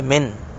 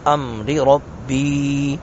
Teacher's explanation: نون ساکن کے بعد حمزہ ہے، یہاں پہ اظہار کریں گے، من، نون کو بالکل ظاہر کریں گے